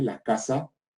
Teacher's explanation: Aspiración de la S